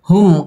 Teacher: মিম সাকিনে ইজহারে খাস গুন্নাহ ছাড়া পড়তে হবে